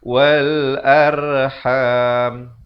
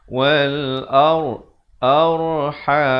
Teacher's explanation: Di sini ro-nya dibaca tebal. Jangan kita baca wal arham.